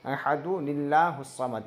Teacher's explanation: अहदु दाल में पेश लगाएंगे और नून में ज़ेर लगा के अहदुनिल्लाहुस समद, जो नून साकिन था वो नून पे एक ज़ेर लगा के पढ़ेंगे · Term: नून साकिन को एक ज़ेर